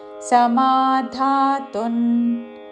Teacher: ధాతున్ అనుస్వారము అన్ ఉచ్చారణ